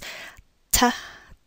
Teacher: Some English speakers will actually make their T with the tongue touching their teeth